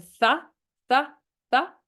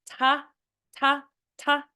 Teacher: it's a little difficult to hold a th but you can hold it more it's a more sustained sound than a t